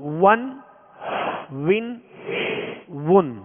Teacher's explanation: دونوں ہونٹوں کی گولائی سے واو ادا ہوتا ہے